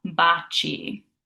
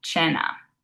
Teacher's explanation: So if we have a C followed by an I or an E, it's a ch sound, like cheers in English. For example, in the word baci, which means kisses, we have a C followed by that I, so it makes it a ch, baci.